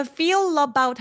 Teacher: 그러니까 feel about 할 때 feel about fe about이 아니라 feel about feel about이 about love about 윈니를 긁어내는 것으로 연음을 해 주셔야 돼요. feel about은 두 번째 단어가 모음으로 시작하기 때문에 앞에 있는 자음 소리를 받아서 연결이 되거든요. 그래서 연음할 때 feel about보다는 feel about feel about 하면서 윈니 뒤쪽을 원래 엘소리 내듯이 꾹 눌러내야 또렷하고 쫀득한 느낌이 듭니다.